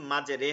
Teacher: জেরকে জবরের দিকে ঝুঁকিয়ে পড়তে হয়